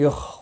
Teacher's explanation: خا مستعلیہ ہے، پر پڑا جائے گا